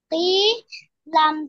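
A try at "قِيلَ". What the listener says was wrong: ই, এরকম টেনে পড়া যাবে না, কিলা কিলা কিলা।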